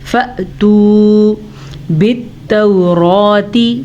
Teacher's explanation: جب بھی الف کے اوپر ساکن آ جائے تو وہ الف نہیں رہتا، وہ حمزہ بن جاتا ہے. حمزہ پہ ساکن ہو تو جھٹکا پیدا ہوتا ہے.